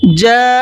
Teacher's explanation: 4 سے 5 الف کی برابر کھینچنا ہے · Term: مد متصل